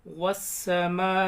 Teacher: والسماء، میم کو زیادہ کھینچیں گے، 4 الف کے برابر، یہاں پر مد آ رہا ہے۔ واو کو ڈائریکٹ سین میں ملائیں گے، الف لام نہیں پڑھی جائیں گے، سائلنٹ رہیں گے۔ والسماء ذات البروج، تا کو یا لام میں ملائیں گے، الف سائلنٹ۔